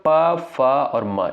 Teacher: प, फ और म इसका उच्चारण दोस्तों किससे होता है? ओष्ठ से होता है।